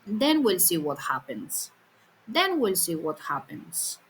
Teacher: The fall is on then and the rest of the sentence stays low. So even though the fall happens early, the tone stays low all the way through. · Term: falling tone, the tail